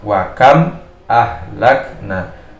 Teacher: idhar dibaca jelas suara makhraj mim sukunnya